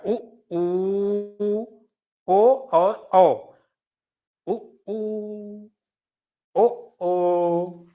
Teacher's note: तो इसमें कौन कौन से आ जाएंगे, तो इसमें आ जाएंगे उ ऊ, छोटा ऊ, बड़ा ऊ, छोटा ओ, मतलब ओ और औ, ठीक है। इनको जब आप बोलोगे तो आपकी ओठें गोल ही होंगी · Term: गोलाकार आकृति